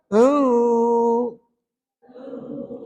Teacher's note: Seterusnya, puan-puan perasan tak bila kita eja ain ya nun, ada nun mati. Jumpa dengan huruf sad selepasnya, maka hukumnya adalah ikhfa' hakiki. Maka di situ nanti tuan-tuan kena dengung 2 harakat.